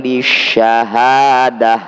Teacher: Jika dibaca waqaf, tak marbutah ini harus dibunyikan hak sukun.